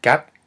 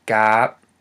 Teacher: we have gap with the short ah sound, and then we have gap with the elongated ah sound